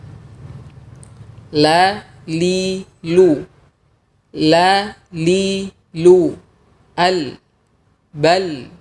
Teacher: huruf lam melibatkan juga tepi lidah, tidak hanya ujung lidah saja.